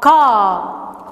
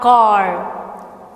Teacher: R is silent when it comes in the final position. Hence, k, a, ka, it's not car.